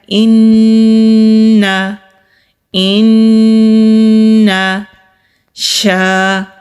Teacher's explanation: ہم 2 سیکنڈ کے لیے غنہ کریں گے، یعنی کہ آواز کو ناک میں چھپا کر روک کر رکھیں گے۔